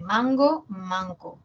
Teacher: no ga y K son velares